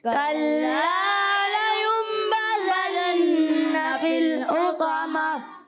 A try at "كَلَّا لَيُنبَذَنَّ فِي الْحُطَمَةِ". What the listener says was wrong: دو غنے آپ نے سب چھوڑ دیے. پہلے اقلاب کا غنہ، پھر نون مشدد کا غنہ. یہاں دو غنے ہیں، اقلاب کا اور نون مشدد کا. دونوں غنے ہم نے کرنے ہیں.